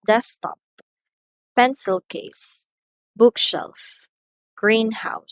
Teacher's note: So for nouns naman, the stress is present on the first syllable